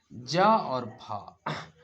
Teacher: कैसा तो पार्श्विक व्यंजन है आगे संघर्षी व्यंजन ज और फ इन व्यंजनों के उच्चारण में श्वास मुख अवयवों से रगड़ खाते हुए बाहर निकलती है